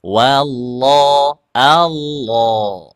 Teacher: ketika lafaz Allah tuh dinaikkan juga pangkal lidahnya ya dinaikkan sambil dinaikkan seperti kita mengucapkan huruf qof